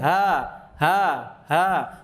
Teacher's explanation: Kalau H tenggorokan bawah, dia antara udara dan suara bersamaan.